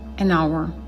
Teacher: Donc, hour commence par un son muet. On n'entend pas le H. Et donc, an, et non a, hour.